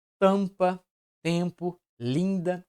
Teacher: ou n como nas palavras tampa tempo linda e nesse caso essas consoantes MN não exercem a função de consonância elas estão apenas acentuando a vogal indicando que a vogal anterior é uma vogal nasal